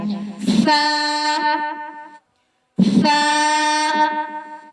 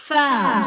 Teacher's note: ثنایا علیہ کے کنارے اور نچلے ہونٹ کے اندرونی حصے کو ملانے سے یہ حروف ادا ہوتا ہے